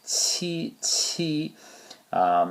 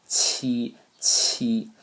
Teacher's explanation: It's kind of a cross between it's kind of like the G, but it has no voice to it, so it's not a vibration in the vocal cords going on there. It's more of an aspirated sound.